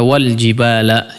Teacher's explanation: Contoh di situ ada wal jibala, ya. Maka tidak dibaca wa ul jibal, bukan dhammah, ya. Wal jibal langsung menjadi wasal, ya, disambung langsung.